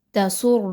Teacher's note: را مشدد ہے اور را کے اوپر پیش بھی ہے تو خوب موٹی کر کے را کو پڑھا جائے گا۔